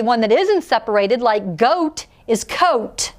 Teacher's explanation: the only sound you hear here is the o so coat is one syllable we can't separate it between the vowels because the o and